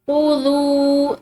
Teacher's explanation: दाल के बाद ये वाव साकिन है, ठीक है, तो यहाँ पर हम इसको लंबा करके पढ़ेंगे